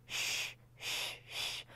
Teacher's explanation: 嘴型是嘟起来的，比你在中文里面发知吃诗是这个样子的，它更嘟一些